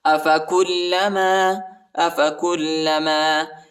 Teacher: کاف کو لام کے ساتھ ملائیں گے، لام کو شدت کے ساتھ سختی کے ساتھ پڑھیں گے